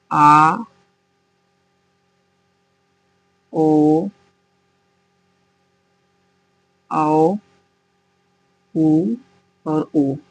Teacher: यह आ ओ औ उ और उ यह जीहवा के पश्च भाग से उच्चारित होते हैं। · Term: पश्च स्वर